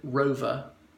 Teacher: If I said rover, the R at the end is vestigial. It sounds more like an A. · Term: non-rhotic